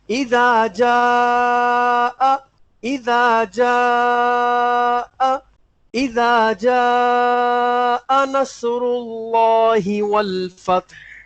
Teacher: حمزہ کی آواز الگ سے بالکل سنائی دے گی